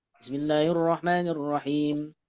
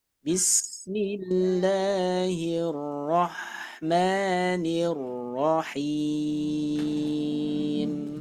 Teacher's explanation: Ketika dibaca wakof, ketika dibaca berhenti, maka mi-nya dari segi pembacaan disukunkan. Kemudian hi-nya panjangnya bisa 2, 4, 6.